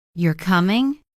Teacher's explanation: I'm sure you're coming. But if I say you're coming, rising tone, it becomes a question I'm not sure I'm asking.